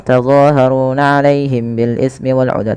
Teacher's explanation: Ada mim mati bertemu ba, ini jangan langsung dibaca lepas gitu ya. Contoh tazaharuna alaihim bil ismi wal udwan, tapi tahan dulu. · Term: ikhfa syafawi